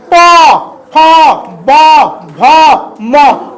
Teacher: प फ ब भ म दोनों ओठ आके चिपक जाता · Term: प वर्ग